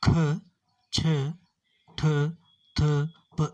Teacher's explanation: ಮಹಾಪ್ರಾಣದ ಅಕ್ಷರಗಳು ಅಂದರೆ ಈ ಅಕ್ಷರಗಳನ್ನು ಹೇಳುವಾಗ ನಮ್ಮ ಬಾಯಿಂದ ಗಾಳಿಯು ಹೊರಗೆ ಹೋಗುತ್ತದೆ